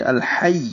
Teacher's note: ظاہر کریں گے ہا وسط حلق سے